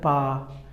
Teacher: पा वर्ग के जितने भी व्यंजन हैं इनको आप बिना ओंठों की सहायता से नहीं बोल सकते।